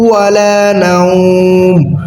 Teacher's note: ওয়ার সময় আসলে মুখটা আমরা গোল করে ফেলবো